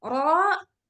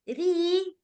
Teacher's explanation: ro tebal bunyinya berat ro tebal RI tipis Kenapa dia tipis karena dia kasrah bunyinya ringan